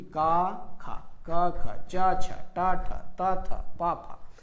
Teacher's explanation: इसके उच्चारण में केवल श्वास का प्रयोग किया जाता है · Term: अघोष